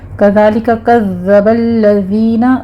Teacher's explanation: ذال کو نرمی سے پڑھنا ہے، صرف آپ نے تشدید ادا کرنی ہے، سیٹی کی آواز نہیں آنی چاہیے